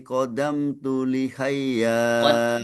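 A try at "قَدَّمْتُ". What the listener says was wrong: qaddamtu tasydid di atas dal qaddamtu qaddamtu qaddamtu da-nya tasydid qaddamtu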